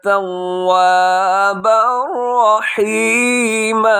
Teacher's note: तव्वाबर रहीमा पे इदगाम है, लेकिन बगैर गुन्ने के इदगाम होगा